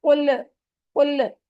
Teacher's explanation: हम लोग ज्यादातर लाम पे कलकला कर देते हैं